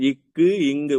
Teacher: உங்க நாக்கோட அடிப்பகுதி அதாவது அந்த உள்ள இருக்கிற நாக்குதான் மேல போய் தொடும் இக்கு இங்கு இச்சு இஞ்சுன்னு சொல்லும்போது இடை ரெண்டுமே அன்னத்தோட இடையும் நாக்கோட இடையும்